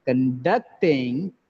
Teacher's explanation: In the word conduct, there are 2 syllables. The second syllable is stressed.